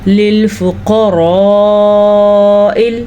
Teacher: یہ مد 5 سے 6 حرکات عربیہ یعنی کہ 5 سے 6 کھڑی زبر کے برابر لمبی کرنی ہے یا 5 سے 6 الف مدہ کے برابر لمبی کرنی ہے۔